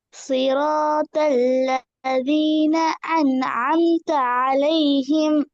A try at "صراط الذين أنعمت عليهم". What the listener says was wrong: அன்அம்த அல்ல. அலிப் சவுண்ட் நோமலாக ஏட உச்சரிப்புக்கு வரணும். ஏன்னா திருப்பி வரும் பில.